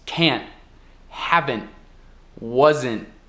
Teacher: quase pronunciando o T, mas não pronunciando